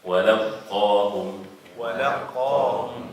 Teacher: if you want to say the qaf right, no air comes out from the mouth because it's way back, no air.